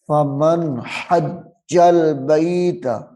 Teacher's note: فمن حج البیت فمن حج البیت، یہاں پہ غنہ نہیں ہوگا کیونکہ نون ساکن کے بعد حروف حلقی میں سے ہاں آ رہا ہے، تو یہاں پہ اظہار ہوگا، غنہ نہیں کریں گے۔